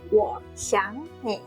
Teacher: xiáng changes to a second tone